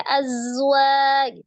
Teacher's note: jadi eh panjangnya empat atau 5 harakat kemudian Az Nah itu hati-hati di huruf Zai yang disukunkan ya Ada asfirnya